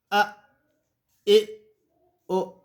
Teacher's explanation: حمزہ اور ہا کا دونوں کا ایک ہی مخرج ہے اقصی حلق کا وہ حصہ جو سینے کی طرف ہے۔ اس کو پڑھنے کا انداز اس طرح ہے، او، اس طرح کر کے اس کو پڑھیں گے۔